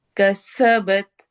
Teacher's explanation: सीन सीटी वाली आवाज है